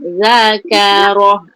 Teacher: zal tu keluar nipis. Keluar lidah zakara. punya zal tu Z tu memang power lah. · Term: zal nipis